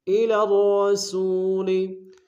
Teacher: دونوں را کو موٹا ادا کریں گے، سو میں واو مدہ ہے، ایک اسم میں کھینچیں گے۔